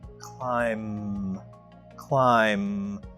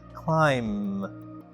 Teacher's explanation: The last letter is B but the last sound is M.